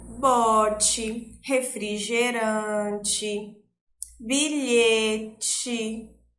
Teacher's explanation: Olha, tá com som de I, mas é escrito com E. E um outro detalhe, o som da letra E não vai ser tão nítido como o da letra I.